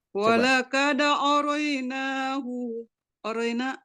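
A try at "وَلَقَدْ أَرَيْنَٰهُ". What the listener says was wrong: Hu-nya kepanjangan.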